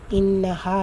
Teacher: நூன் முஷததா குன்னா செஞ்சு ஓதணும் ஹால வந்து அலிஃப் மத்தா இருக்கு இரண்டு ஹரக்கத் அளவு நீட்டம் கொடுத்து ஓதணும்